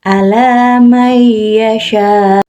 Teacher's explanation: Jadi di sini bukan alaman yasha, tapi nun matinya melebur ke ya. Jadi dibacanya, jadi seolah-olah kayak ada tasydid gitu. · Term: idgham bigunah